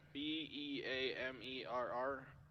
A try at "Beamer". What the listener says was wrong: Why are we putting two R's? There's one R.